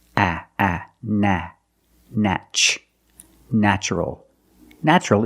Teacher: the first syllable is pronounced with a short a like black cat